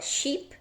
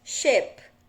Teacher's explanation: Sheep é o som do I longo. Então, como I de igreja, então a gente fala sheep. E ship, navio, é o som do nosso E, ou som do I breve do inglês